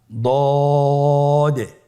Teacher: মাখরাজ জিহ্বার গোড়ার কিনারা সামনের উপরের দুই দাঁতের গোড়ার সঙ্গে লাগিয়ে উচ্চারিত হয়